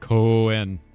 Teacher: it sounds like it takes the O and draws it out like Coen